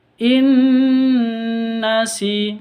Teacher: masuk ke nun yang kedua disertai dengung. In nasi, namanya idgham bi gunnah.